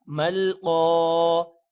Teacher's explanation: قاف کو موٹا پڑھنا ہے اور الف ہے یہ الف مدہ بن جائے گا. جب بھی الف سے پہلے زبر ہو تو الف مدہ ہوگا مل قا.